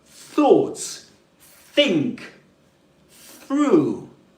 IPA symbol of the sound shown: θ